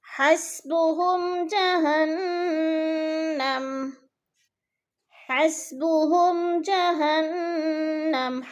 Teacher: حسبهم میم ساکن کے بعد جیم آ گیا ہے تو یہ اظہار شفوی ہو رہا ہے اور یعنی غنہ نہیں کریں گے